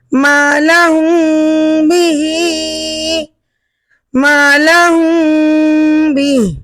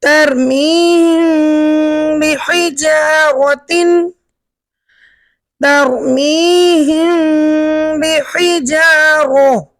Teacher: میم ساکن کے بعد حرف با آ جائے تو وہاں اخفا ہوگا، مطلب آپ کو اس کی آواز ناک میں لے کر جانا ہے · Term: اخفاء شفوی